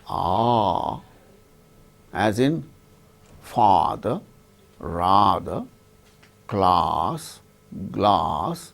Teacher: When we say ah, as in father, rather, class, glass, like that, the tongue goes down. Then cavity is totally open.